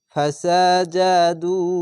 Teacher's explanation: এর নাম হচ্ছে মাদ্দে আরজি তিন আলিফ টান হবে